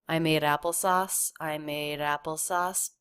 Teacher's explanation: it's just a very quick light flap because the D does come between two vowels here and the D between vowels just like the T between vowels